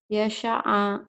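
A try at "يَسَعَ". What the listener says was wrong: Sin kecil, kamu orang nggak bisa sin gede, malah kamu bisa sin gede. Sin kecil, kamu nggak bisa sin kecil nih. Saya suka sate, saya suka susu sapi. S, ya.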